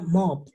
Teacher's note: los que terminan en P, los pronuncio con una T. Entonces yo diría mopped, mop.